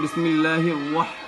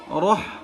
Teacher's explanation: আসলে আপনি বলতেছেন বিসমিল্লাহির ওয়াহ, ঠোঁট গোল করতেছেন, রহমানির রহিম বলতেছেন। র বলতে তো ঠোঁট গোল হয় না বাবা